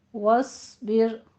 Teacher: واو دونوں ہونٹوں کو گول کر کے ادا کریں گے اور واو کو پر نہیں کرنا، واو باریک رہے گی، واس نہیں کہنا ہے، صاد کو پر کرنا ہے۔